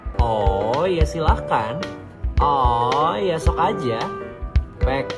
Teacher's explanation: bunyi H ditambahkan di antara suku kata la dan kan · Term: penambahan fonem H